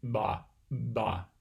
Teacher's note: listen for that kind of low frequency hum that you get with voicing